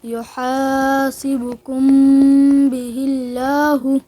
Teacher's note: قاعده نمبر 2 هر کله چې د میم ساکن نه وروستو حرف با راشي نو په دغه میم ساکن کې به د یو الف مقدار غنه د اخفا کېږي